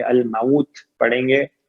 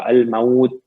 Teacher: تا پہ وقف کریں گے تو ہمس ہوگا